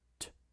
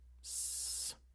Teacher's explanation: So if you feel your tongue as you produce both of these sounds, t, s, t, s, you'll notice that on the t, you have contact with the alveolar ridge. T is the devoiced alveolar sound. But in the s, you'll notice that your tongue goes up near the alveolar ridge. It doesn't quite touch it, but the alveolar ridge is still the closest thing in the mouth it's near.